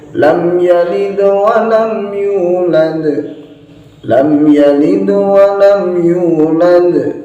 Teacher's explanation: setiap ujung ayatnya pada surat Al-Ikhlas ini ada qalqalahnya semua